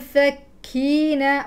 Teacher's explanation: نون ساكنه بعده ف اخفاء اذهب بمخرج لساني الى الفاء قبل ان اصل اليه